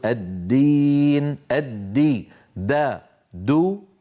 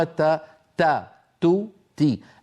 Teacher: المخرج واحد ولكن الخلف بينهما في صفه الجهر فالدال مجهوره والتاء مهموسه